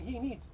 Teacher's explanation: that it is pronounced as Z so I say he needs though I write S but the S is pronounced as Z because it is preceded by a sound called voed sound but